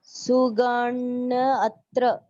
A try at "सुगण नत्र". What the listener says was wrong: अरे अत्र नहीं, नत्र, सुगण नत्र।